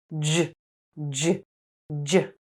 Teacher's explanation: please add your voice and vibrate your vocal cords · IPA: /dʒ/